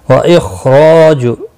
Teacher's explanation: خا مستعلیہ ہے، پر پڑھا جائے گا، را زبر کی وجہ سے پر پڑھا جائے گا ، الف مدہ بھی ہے، ایک الف کے برابر کھینچ کر